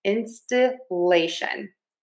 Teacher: to say these words correctly, we are going to stress syllable number three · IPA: /ˌɪnstəˈleɪʃən/